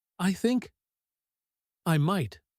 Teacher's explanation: The pause before I might carries real emotional weight · Not really at the end falls softly, almost trailing off, gentle and a little wistful